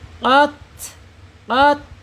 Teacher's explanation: sifat ta ini alhams mengalirnya napas atau udara